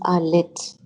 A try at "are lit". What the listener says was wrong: why do you say are lit and you drop your voice at the end